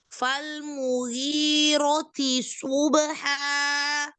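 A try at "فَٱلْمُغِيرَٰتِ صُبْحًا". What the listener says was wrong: Di sini ro-nya mat. Ro-nya mat, lalu ti subha. Jangan nyerempet ke tanya. Tisu, tapi tidak subha.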